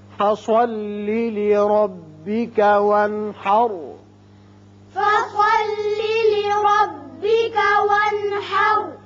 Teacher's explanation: لربک را پر ہوگا اس لیے کہ اوپر زبر ہے